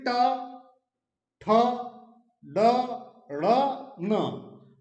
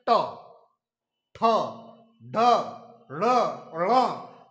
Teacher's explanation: आपकी जीभ है वो दांतों और तालु के बीच में जाके टकराएगी और उस स्थान को क्या कहा जाता है, मूर्धन्य कहा जाता है। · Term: मूर्धन्य व्यंजन